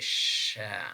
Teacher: This is voiceless, means that when we are producing this sound, we perceive less vibration, and then in terms of place of articulation, this is post-alveolar. In terms of manner of articulation, this is fricative, means that we release the air very slowly.